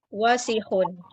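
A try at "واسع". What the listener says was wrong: Pendek, wasikhun yang nggak panjang.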